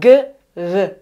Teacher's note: tiene un sonido oclusivo velar sonoro